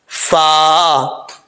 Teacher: اوپر والے جو دو دانت ہیں ان کا کنارہ جو ہے، جو نیچے والا کنارہ ہے وہ نیچے والے ہونٹ کی تری والی جگہ پہ لگے گا تو فا پڑھا جائے گا